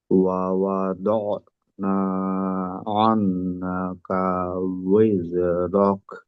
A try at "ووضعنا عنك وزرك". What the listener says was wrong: গুন্নাতে আরো সময় নেন। আনকা উইজরক গুন্না এবং টান যতটুক সময় ওইটাকে পূর্ণ, ওইখানে কম করা করবেন না। আর ওই সময়টাকে পরবর্তী উচ্চারণের প্রস্তুতি স্বরূপ কাজে লাগাবেন, মানসিক প্রস্তুতি।